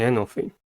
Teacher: Anal has 2 syllables and the stress is at the first one. The first syllable is a.